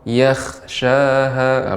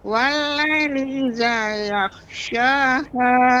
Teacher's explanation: tapi jangan sampai ghain ketika sukun jadi huruf kha